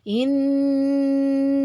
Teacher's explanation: gunnah yang di depan itu inna ya, gunnah ditahan 3 harokat